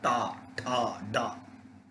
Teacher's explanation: टाठा डाढ़ा जीभ को पीछे लेके बोलते हैं